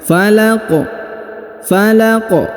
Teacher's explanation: di ujung karena dia disukunkan ataupun dimatikan di ujung ayat ini Maka kita baca pantul atau diqalqalahkan